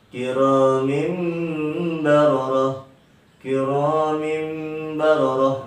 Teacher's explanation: Nah, di situ ada kasroh tain. Tanwin berupa kasroh tain bertemu dengan huruf ba. Jadi pemirsa tidak boleh dibaca kiramin bararah. Bunyinya diganti dengan huruf mim. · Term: iqlab